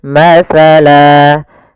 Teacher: awalnya masalan, karena kita waqaf, ini kita namakan dengan mad iwad